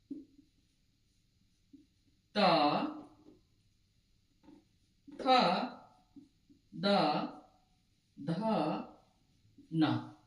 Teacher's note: त वर्ग का उच्चारण हम लोग करते हैं दांत से